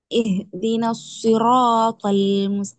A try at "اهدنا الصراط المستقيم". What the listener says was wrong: அந்த துவாடல் சவுண்ட் வானத்தை நோக்கி போகுது இல்லை. தீன சிராத்வல் துவல் துவாயில் துவல் முஸ்தகீம்.